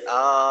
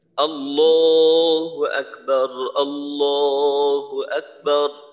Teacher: আল্লাহ শব্দের যে আলিফ হামজার যে উচ্চারণটা আছে এটাকে লম্বা করা যাবে না কোনভাবেই এটাকে লম্বা করা যাবে না এটা লম্বা হইলে অর্থের মাঝে